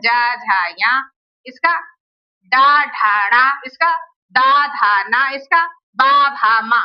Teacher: ये सभी स्वर, सभी 11 स्वर, और ये तीसरा, चौथा, पांचवा, ये इनमें ये स्वघोष हैं। ये स्वघोष क्यों है? क्योंकि इनके उच्चारण में हमारे गले में कंपन हो रहा है।